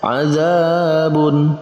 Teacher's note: Maka masuk dalam pembahasan mad tabi'i, dibacanya dua harokat atau dua ketukan